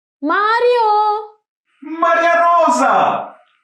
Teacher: move the tip of your tongue super fast up and down when you say the Russian r